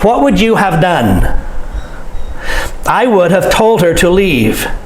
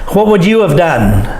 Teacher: we say what would you of you of and so we change have to of we cut it short · notice how have is reduced to of in the following sentences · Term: reduction